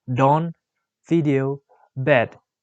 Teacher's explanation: The description of d is voiced alveolar stop.